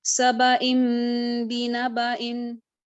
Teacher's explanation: बा का जो फतह है उसको मैंने आधे अलिफ के बराबर खींचा और एक अलिफ के बराबर गुन्ना किया